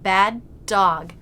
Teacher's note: you have to stop the air to signify the first consonant, then release the sound into the next word. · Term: with a stop